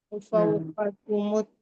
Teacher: قاف موٹا پڑھیں گے، اور کاف کو باریک پڑھیں گے، جلد پڑھیں گے.